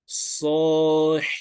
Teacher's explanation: saw is 2 counts because we have the sod with the fatha meeting with the alif